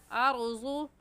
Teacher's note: रा साकिन से पहले ज़बर है तो रा साकिन को मोटा पढ़ेंगे।